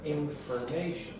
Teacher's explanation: if the stress is not on the syllable, very often your for will become fur. It will be quick, it will be quieter than the other syllables, so it will become information.